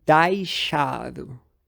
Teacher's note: no português europeu, pelo menos na variante de Lisboa, é comum que esse ditongo seja realizado como AI.